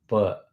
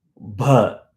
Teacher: pa is coming from the front of the mouth. Pa. Bha goes to the back of the mouth.